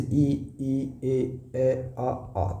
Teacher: इसमें गोल मुंह नहीं बनता। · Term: अ गोलाकार